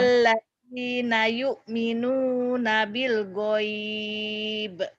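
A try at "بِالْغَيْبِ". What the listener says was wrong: Bil goibi. Pendek. Bil goibi nggak ada yang panjang kalau nggak berhenti. Kalau berhenti panjang. Kalau berhenti panjang, tapi kalau nggak berhenti nggak panjang. Bil goibi wa yuqimunas shalah gitu ya.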